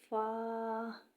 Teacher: اوپر والے دونوں دانت نچلے والے ہونٹوں سے لگنے چاہیے۔